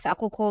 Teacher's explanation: akoko has a low high high tone